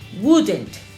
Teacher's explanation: Y la forma negativa de would quedaría wouldn't. No olvidemos, desaparece la O y la L.